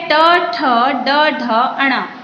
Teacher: ट, ठ, ड, ढ, अण बोलते समय हमारी जो जीभ है वो मूर्धा को, ट, ठ, ड, ढ, अण बोलते समय हमारी जीभ मुख के अंदर मूर्धा से टकराती है और तब ये ट, ठ, ड, ढ, अण वर्ण हमारे मुख से बाहर निकलते हैं।